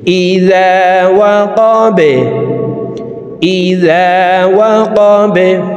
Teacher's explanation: তো এখানে দেখুন 3টির ভিতরে একটি হরফ বা আছে, এই কারণে এই বা হরফকে নিচের দিকে ধাবিত করে ধাক্কা দিয়ে সাকিন করে ফেলব।